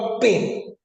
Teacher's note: tener que cerrar la boca para que el aire salga como una explosión O sea hay un momento de silencio que es el de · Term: oclusivas